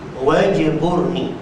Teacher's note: Ni tuakan. Wajburni, aku nak bagi betul macam jim tu mati. Waj ada qalqalah sughra. Wajburni, jangan wajuburni.